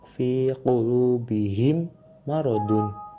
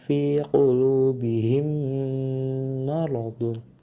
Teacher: Mim yang pertama dimasukkan ke dalam mim yang kedua serta didengungkan.